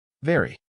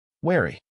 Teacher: V sound, teeth touch lower lip. Wary, W sound, round your lips.